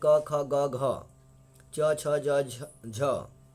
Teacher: अननुनासिक और निर्नुनासिक बोलते हैं, जो केवल मुख से उच्चारित होते हैं